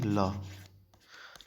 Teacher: जिसमें वायु जीभ के बगल से निकले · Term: पार्श्विक